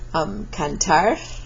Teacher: the R is trilled or rolled at the back of the word